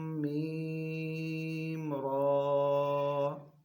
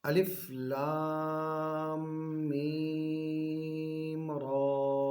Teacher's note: اب ہم نے اس لام کو لمبا کر کے میم کے ساتھ ملایا، میم کو لمبا کیا، را کو لمبا کیا مگر تھوڑا، 1 الف کے برابر، کیونکہ اس کے اوپر کھڑی زبر ہے